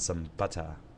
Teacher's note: Places like New York, like Boston, I think all of Great Britain doesn't pronounce their R's when it comes after a vowel